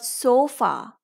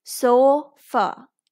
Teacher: However, if you see some multisyllabic words, for example, the word sofa, so here O is saying its long sound because it is at the open syllable position, but the other vowel, that is A, is neither saying its long nor its short sound. Instead, it's saying a, so fa. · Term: schwa